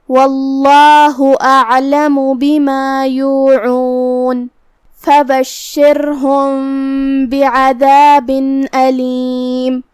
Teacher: حرف العین پہ جزم ہے تو ہمیں عین کو ظاہر کرنا ہے اور ہم عین کو حلق کے درمیان والے حصے سے ادا کریں گے. آخری میں میم پہ پیش ہے تو اس کا دھیان رہے. · کلمت اعلمو کی شروعات میں یہاں حمزت قطع ہے، ہم حمزہ کو ظاہر کریں گے اور حمزہ کو حلق کے نیچے والے حصے سے ادا کریں گے